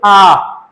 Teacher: आ का उच्चारण करते समय जो मुख की आकृति है वो संपूर्ण खुल जाती है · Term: विवर्त स्वर